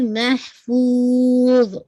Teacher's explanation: وا کا sound اینڈ میں آنا چاہیے. فو کو آپ کھینچیں گے 4 کاؤنٹ تک اور پھر وا کے ساتھ اینڈنگ ہوگی.